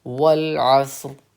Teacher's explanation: عصر پہ ہم نے سانس توڑی ہے تو را کو ساکن کیا ہے